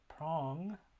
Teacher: So if we were to transcribe a word like prong, you can transcribe it phonetically by noting the aspiration and the length of those vowels, of the vowel, and you'd have that velar nasal at the end. So you have the aspirated p, r, a, ng as your phonetic transcription, and of course, depending on your variety of English, you could have either of those vowels.